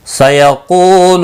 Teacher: قاف مستعلیہ ہے، پر پڑھا جائے گا، لو واو مدہ ہے، ایک الف کے برابر کھینچ کر پڑھیں گے، باقی کسی بھی حرکت والے حرف کو کھینچنا نہیں ہے۔